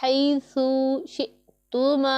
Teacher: یہ والا ہا حلق کے درمیان والے حصے سے ادا ہوتا ہے